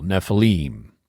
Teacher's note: Hebrew, unlike English, likes to put the accent on the last syllable, on the ultima.